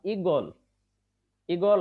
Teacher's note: দীর্ঘ ই উচ্চারণের সময় দীর্ঘ ই থাকবে না তখন হয়ে যাবে রস ই